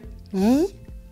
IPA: j